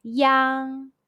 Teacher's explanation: When you see the English letter IANG in Pinyin, the pronunciation is yang. It's like the sound of yang in the English word, but the G sound is barely pronounced and with mouth opened as wide as you can. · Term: final yang